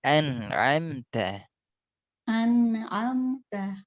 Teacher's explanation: nunnya lebih panjang sedikit, setengah mengalir.